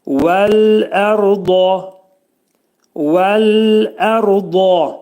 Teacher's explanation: Dat hərfinin məxrəci dilimiz sol tərəfdən iki dişin arasına girir